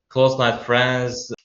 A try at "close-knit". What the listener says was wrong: Close knit friends, not night. It's close knit. Even though you got that K, it's knit, right? It's more like knife. This word, yeah, right. So you all use this, this word, but you won't say knife. The K is silent. Same goes for close knit.